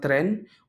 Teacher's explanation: J noteworthy properties include the presence of the glal Stop and a tap r which sometimes can be rolled